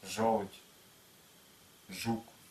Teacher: и примерно Вот такая вот площадь образует щелевую согласны ж ж в русском ж кончик языка слегка приподнимается